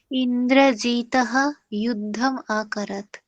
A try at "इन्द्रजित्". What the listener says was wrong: हाँ इंद्रजीतः ना इंद्रजित। इंद्रजित।